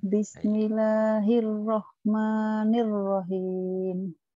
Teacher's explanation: R-nya jadi hilang, cedal itu ya